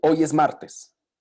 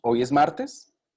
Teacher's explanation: en la primera la entonación va descendente en la segunda va ascendente